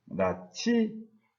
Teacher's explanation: 히읗과 지읒이 합쳐져서 치읒으로 이런 식으로 바뀌는 것이 바로 거센소리 대기 현상이라고 할 수 있습니다. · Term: 자음 축약 현상